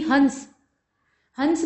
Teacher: जब हन बोल रहे हैं ना तो उसमें नाक का भरपूर इस्तेमाल करना पड़ रहा है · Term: अनुस्वार